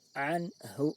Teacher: Jelas berupa bunyi nun sukun, bukan bunyi yang lainnya. Tidak dengung dan juga tidak samar. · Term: izhar halki